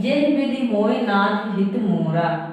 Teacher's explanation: दीर्घ मात्रा लगी रहती है, लेकिन उसका जो उच्चारण होता है उसका हम उच्चारण ह्रस्व की तरह करते हैं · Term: स्वराघात